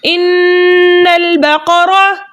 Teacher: हम नून मुशद्दद में गुन्ना करके पढ़ते हैं हमेशा